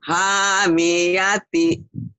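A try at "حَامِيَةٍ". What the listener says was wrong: Yang panjang ha dong. Hamiyati.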